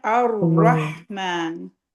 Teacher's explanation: आगे रहमान का रा हैवी पढ़ना है